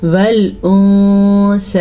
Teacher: والانثی، نون ساکن کے بعد سا حروف اخفا میں سے آیا ہے تو نون ساکن کی آواز کو ہم چھپا لیں گے